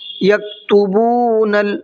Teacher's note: با کو کھینچنا ہے، اس لیے کہ یہاں پر واو مدہ ہے